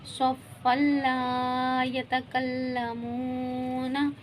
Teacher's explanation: یہ دیکھیں واو مدہ ہو رہا ہے، واو ساکن اس سے پہلے پیش واو مدہ ہوا، ایک سے دو مقدار کھینچیں گے۔